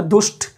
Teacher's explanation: ट मूर्धा से बोला जाता है, और इस विसर्ग का जो दंत स बनेगा ट के साथ बोलने पर मूर्धन्य स बन जाएगा